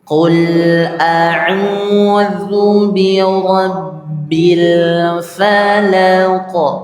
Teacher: Karena huruf qaf ini dia memantul, maka pantulannya juga tebal. Qa juga pantulannya, bukan ke.